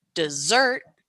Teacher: I'm emphasizing the second part of that word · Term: word stress